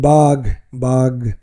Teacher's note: হয় যেমন বিষয় এর উচ্চারণ বিষয় সম্পদের উচ্চারণ সম্পদ আর কি মহাপ্রাণ অল্পপ্রাণ বর্ণে পরিণত হয়